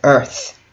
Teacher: as a first word and stressed syllable earth is emphasized